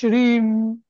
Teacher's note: श्रीम असं म्हटलं की श्री मधल श आणि र गेलं इ च गुंजन होत श्रीम मध्ये नाही का तर म्हणून त्याला ला अनुस्वार म्हणतात म्हणजे